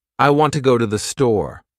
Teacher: In this sentence, want and store are stressed and the other words are said quickly and softly.